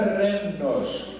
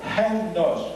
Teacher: E achamos lá a palavra renos, que não é renos, com a ponta da língua, renos, com a garganta, é gutural. É uma pronúncia que não existe em português.